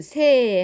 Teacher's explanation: 예를 보면은 무엇 하는 사이 할 때 이 사이를 축약하면은 무엇 하는 새 하고 새가 됩니다. 이때 단모음 아와 단모음 이가 축약되어 단모음 에를 만들어내는 거지요